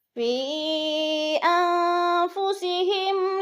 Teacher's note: نون ساکن کے بعد فا حرف اخفا میں سے ہے تو ادھر اخفا کریں گے، آواز کو ناک میں چھپا کر پڑھیں گے